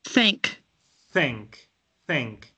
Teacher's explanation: Es como dejando pasar aire entre la lengua y el paladar y los dientes. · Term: la TH